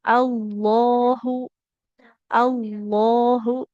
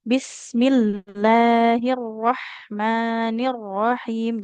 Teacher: Lam kan memang sifat aslinya istifal ya, pangkal lidahnya merendah atau huruf yang tipis. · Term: Lam biasa